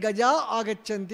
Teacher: విసర్గ తర్వాత ఏముంది అచ్చు ఉంది కాబట్టి విసర్గ లోపించి మళ్ళీ గజా ఆగచ్చంతి అవుతాది